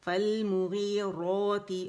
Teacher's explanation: را کی آواز کو کھینچے تو یہاں موٹی را ہوگی کیونکہ را پہ زبر ہے، ٹھیک ہے؟ فالمغیرات، اور الف مدہ بن رہا ہے تو آواز 2 کاؤنٹ کے لیے اوپر جائے گی، روتی روتی روتی، ٹھیک ہے؟